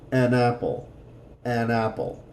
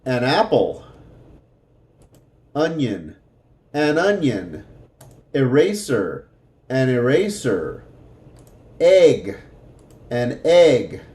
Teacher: one word ok it's going to sound like that an apple even though they're separated it's going to sound like they're together